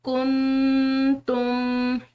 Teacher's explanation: इख्फा कहते हैं आवाज़ को छुपाना नाक में